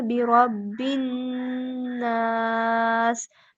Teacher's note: نون مشدد ہے تو وہاں پہ ہم غنہ کریں گے